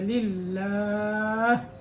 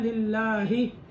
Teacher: इससे पीछे ज़ेर है इसलिए इसको बारीक करेंगे। और हा को साकिन करेंगे क्योंकि वक्फ किया है। इसके वक्फ की सूरत में लिल्लाही को हा को साकिन कर दिया, लिल्लाह।